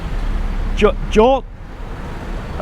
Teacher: the Dordek is a final consonant that makes an unreleased T sound